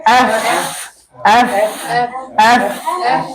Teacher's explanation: tip of your upper teeth makes contact with the inner part of your lower lip